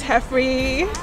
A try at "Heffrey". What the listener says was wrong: Heffrey. That's Frey, like, okay. That's pronounced like Frey, not Free.